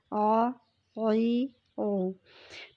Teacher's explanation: یہ جو عین حرف ہے اس کو ہم نے حلق سے ادا کرنا ہے